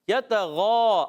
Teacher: غین کا مخرج ہے حلق کا اوپر والا حصہ